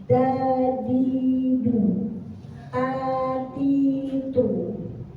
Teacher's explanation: Da ujung lidah bertemu dengan gusi. Da ditempelkan ketika kita membaca da.